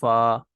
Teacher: उलिया का किनारा जब निचले होंठ के अंदरूनी हिस्से से लगे तो इससे फा निकलता है